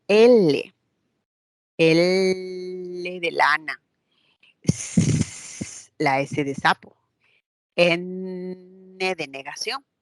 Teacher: cuando el ápice de la lengua se conecta hasta los alvéolos y se produce un sonido como L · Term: alveolares